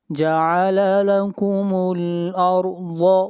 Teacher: ضاد حروف مستعلیہ میں سے ہے، ضاد کو موٹا پڑھا جائے گا۔